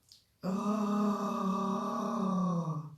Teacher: C'est un son qui est assez guttural, donc qui vient du fond de la gorge. Et en faisant le son, on va se pencher vers l'avant et on peut visualiser la couleur jaune dans la zone de l'estomac.